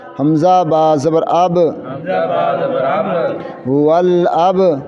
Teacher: با قلقلہ ہے با حروف قلقلہ میں سے ہے اس لیے اس کو ہلانا ہے قلقلہ کرنا ہے